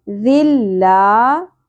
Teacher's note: لا الف آ گیا حرف مدہ، ایک الف کے برابر کھینچیں گے